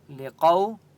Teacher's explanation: واو لین ہے اس لیے قاف کو لمبا نہیں کریں گے